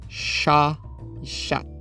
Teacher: Para os mais jovens, esse O e esse A fundiram, mas no Canadá está melhor preservado em chá e chat.